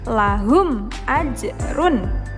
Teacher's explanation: huruf mim sukunnya dilafalkan dengan jelas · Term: idhar syafawi